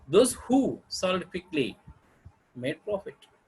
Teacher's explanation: It's a falling tone, and made profit is rising tone.